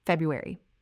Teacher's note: 4 syllables, first one stressed